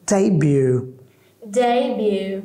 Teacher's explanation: So, we will pronounce day in higher scale, high scale and bu in the middle scale. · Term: stress